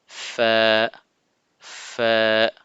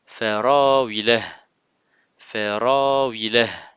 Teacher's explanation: Elle sort au niveau des lèvres, l'extrémité des incisives supérieures, donc les dents au-dessus, se pose sur l'intérieur de la lèvre inférieure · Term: son F